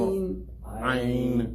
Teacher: From the middle of the throat.